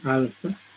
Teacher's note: Este líquido lateral se está interdentalizando también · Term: interdentalizado